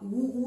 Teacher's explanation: ऊ बोलते ही आपके होठ वर्ताकार हो जाते हैं। तो ऊ का उच्चारण स्थान आपको ओष्ठ में डालना है।